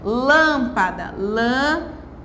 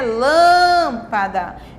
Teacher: Eu pronunciei o lã, a sílaba lã, com mais força. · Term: sílaba tônica